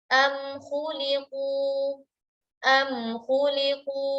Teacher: memperjelas bunyi mim sukun saat berjumpa dengan huruf-huruf selain mim dan ba tanpa adanya gunnah yang dipanjangkan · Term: izhar syafawi